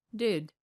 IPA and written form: dɪd (did)